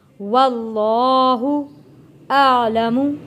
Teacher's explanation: یہاں پہ اللہ کا لام موٹا پڑھیں گے کیونکہ اللہ کے لام سے پہلے زبر آ رہا ہے، اس لیے ہم نے اللہ کا لام موٹا پڑھنا ہے۔